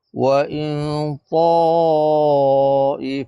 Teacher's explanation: Bila huruf nun mati bertemu dengan huruf ta, dia kena kadar dia antara dengung dan izhar. Maknanya wa in, jadi lidah kita tu tergantung di tengah-tengah. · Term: ihfa hakiki